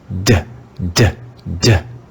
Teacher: a second sound for the english letter t is a voiced t this sounds like the consonant d